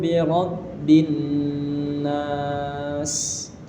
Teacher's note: Bi rob ini ada tasydid harus kita tahan.